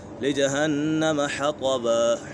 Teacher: نون مشدد میں ہمیشہ غنہ ہوتا ہے